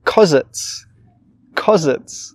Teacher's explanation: When native speakers say because it's, really, really quickly, we don't say because, we just say cause.